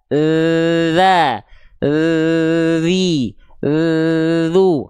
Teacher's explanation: dari segi suara dia sifatnya adalah rokhawah. Rokhawah itu artinya mengalir suara. Kalau dia terlalu ditekan kuat-kuat, maka suaranya tidak akan mengalir.